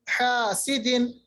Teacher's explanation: हा जो है ये वस्त हलक से अदा होता है